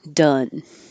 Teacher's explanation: So the vowel in done is like up. Your tongue is low in the middle.